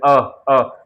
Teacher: अ तो आपको महसूस होगा यहां से गले के पास से कंठ से अ कंठ से आवाज आ रही है। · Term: कंठ से उच्चारण